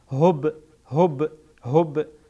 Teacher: با در اینجا قلقله میشه با قلقله میشه یعنی تکان میدین